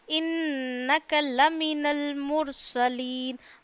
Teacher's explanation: मुर में रॉ को मोटा पढ़ना है, जब भी रॉ साकिन से पहले पेश आ जाए रॉ को मोटा पढ़ते हैं।